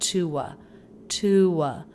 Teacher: by keeping an oo vowel and then putting a schwah at the end, we keep the feeling of two different words of two different syllables · Now, the word to here is not reduced. It's not thewah.